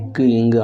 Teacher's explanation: நாவின் முதற்பகுதி அன்னத்தின் அடிப்பகுதியை பொருத்துவதால் கிடைக்கின்றன